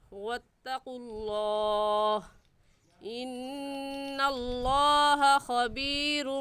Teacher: یہاں پر بھی لفظ اللہ سے پہلے پیش آ گیا تو لفظ اللہ کو پر یعنی موٹا پڑھیں گے